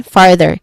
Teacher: Starting with further, which has two syllables, far being the first syllable and the stressed syllable